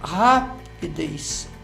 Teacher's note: ela é uma palavra cujo som mais forte é na última sílaba. Então, ela é uma palavra oxítona.